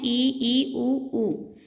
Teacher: समवृत्त स्वर में मुख बंद होता है, यानी कि पूरी तरह से तो नहीं पर लगभग मुख बंद होता है